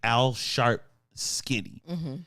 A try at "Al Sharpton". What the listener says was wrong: It ain't Al Sharp, but it's Al Sharpton. you said Al Sharp.